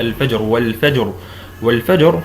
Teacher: الوقف كقوله تعالى اذا وقفت على قوله تعالى الفجر والفجر والفجر هنا عند الوقف اصبحت حركه الراء سكون وقبلها الجيم ساكنه وبعد وقبلها ايضا فاء مفتوحه فاصبح عندنا راء ساكنه قبل لها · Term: التفخيم